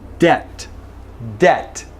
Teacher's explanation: No B at all whatsoever.